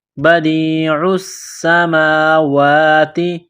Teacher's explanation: بدیع السماوات، دال کو یا کے ساتھ پلس کرنا ہے، عین کو سین کے ساتھ ملانا ہے، پلس کرنا ہے، سین میں سیٹی کی آواز پیدا کرنی ہے